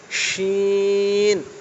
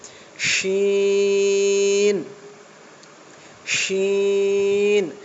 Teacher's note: আর দেখেন যেটার ফোঁটা আছে এইটা, এই শিনটা, এটা সিন হবে না, এটা কি হবে শিন। শিন, জিভের মাঝখান থেকে হাওয়াটা বার হবে, হ্যাঁ, গাঢ় হবে।